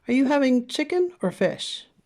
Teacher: we use a combination of rising and falling intonation in the same sentence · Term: rise fall